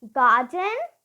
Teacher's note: I don't pronounce the r because I have a consonant coming after it the dust South Garden and start again don't pronounce the r